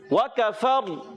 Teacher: جب وقف کریں گے تو را ساکن ہو جائے گی، اور اس سے پہلے زبر آنے کی وجہ سے را پر ہو جائے گی